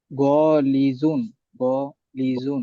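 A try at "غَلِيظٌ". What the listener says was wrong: গলিজুন, গতে টান নাই তো। হ্যাঁ, গলিতে টান হবে, কিন্তু গলিজুন হবে না, তুমি প্রথমে গ বলছো।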